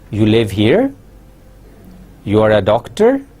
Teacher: you can make it a question by asking it in rising tone